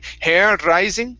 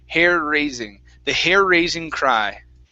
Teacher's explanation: we have the two RS together so we're going to Mush those sounds together